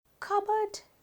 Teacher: cupboard කියනකොට ප sound එක පැහැදිලිව ඇහෙන්නේ නැහැ. cupboard ප sound එක ඇහෙන්නේ නැහැ. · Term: a silent letter